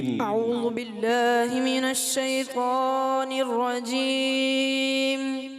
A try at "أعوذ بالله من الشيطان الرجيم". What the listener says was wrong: اچھا اعوذ باللہ میں تھوڑا زال جو ہے زا کی طرف محسوس ہوا، دوبارہ پڑھیں، دوبارہ پڑھیں.